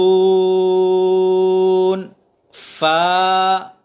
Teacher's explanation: اوپر والے دانتوں کا جو کنارہ ہے اس کے ساتھ جب ہم اپنے ہونٹ کو ملائیں گے تو فا ادا ہوگا. تو فا میں فا کی آواز نہ آئے بلکہ فا کی آواز آئے.